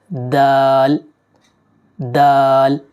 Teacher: دانتوں کی جڑ یعنی مسوڑوں سے لگتی ہے تو دال ادا ہوتا ہے